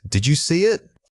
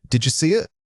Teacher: A common error is pausing too much after the dead sound. In rapid conversation, the did you almost always links together into a single breathy unit. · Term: Natural linkage